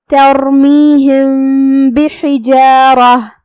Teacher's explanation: یہاں حکم ہے اخفاء شفوی، لہذا ہم یہاں میم کو تھوڑا سا چھپاتے ہوئے لیکن غنہ کے ساتھ یہ حکم کو ادا کریں گے